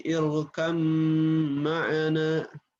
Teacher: Irkab, bukan irkab, tapi irkam ma'ana, diidghamkan ke huruf mim langsung. Sehingga terdapat dengung atau gunnah, maka idgham mutajanisain ini masuk ke al-khayshum, begitu.